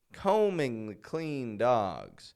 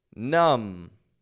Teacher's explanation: I don't release that B. I don't release the B. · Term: silent